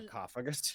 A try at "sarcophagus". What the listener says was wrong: I thought it just sounded like suck for a second.